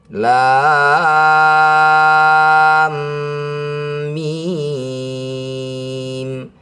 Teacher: Kemudian mim bertasydid. Ini disebut bacaan gunah musyaddadah. Harus didengungkan dua harakat.